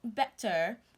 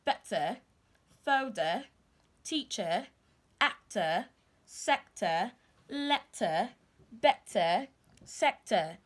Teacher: The British will pronounce words that end with ER, the schwa sound